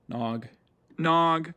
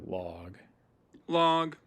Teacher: one thing with L's especially if I'm producing them is that F2 is going to be low